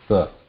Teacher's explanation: There's a hissing sound, but the tongue is pointing towards the back of the teeth there, trying to block the air there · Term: danta